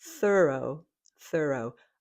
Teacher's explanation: Again, this one has the unvoiced TH, followed by thur, and then the second syllable is O